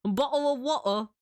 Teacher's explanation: So the sound that like you're replacing the T with, that's a glottal stop. You're essentially like closing your throat.